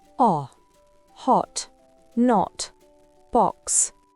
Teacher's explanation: En britannique, c'est un O très bref.